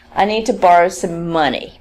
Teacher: Money is the new information. It's the end of the utterance and it's stressed.